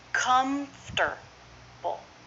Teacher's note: Comfortable. 3 syllables, first syllable stress.